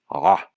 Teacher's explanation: The ones like la'avod and la'amod used to be pronounced with ah, one of LanguageSim's favorite sounds next to uy. That's a voiced pharyngeal constriction, literally just squeezing the throat muscles